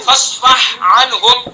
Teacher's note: असल में क्या होता है फस्फह अन्हुम, दो हरूफ हल्की है, ठीक है, एक हा है और दूसरा आइन है